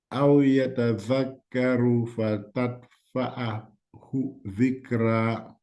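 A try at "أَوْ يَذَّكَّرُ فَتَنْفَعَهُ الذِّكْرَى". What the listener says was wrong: There is no ta letter.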